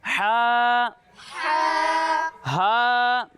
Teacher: جب ہم ہا کی ادائیگی کریں گے تو اسے حلق کے درمیانے حصے سے پڑھیں گے